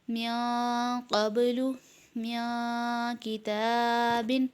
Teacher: قاف اور کاف دونوں ہی حروف اخفا میں سے ہے، اس لیے یہاں بھی اخفا یعنی غنہ کر کے پڑھیں گے